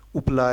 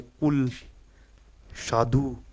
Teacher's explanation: संवृत यानी बंद एकदम जब बोलते वक्त मुख लगभग बंद रहता है